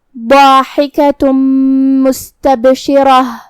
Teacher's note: لیکن ہم کلمت مستبشرہ پہ رکیں گے تو تا مدورہ پہ ہا سے رکیں گے.